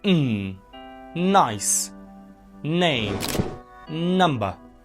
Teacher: That makes it a nasal sound, okay? Voicing, feel your throat. The vocal cords vibrate. So, it's voice sound, okay? Always remember, n is a voiced alveolar nasal sound, okay?